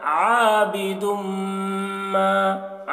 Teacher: मीम मुशद्दद है तो मीम में गुन्ना करेंगे